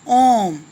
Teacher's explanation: प्लुत स्वर, तो इसके उच्चारण में ह्रस्व से तिगुना समय लगता है, अर्थात जिसके उच्चारण में सबसे ज़्यादा समय लगता है उसे हम प्लुत स्वर कहते हैं।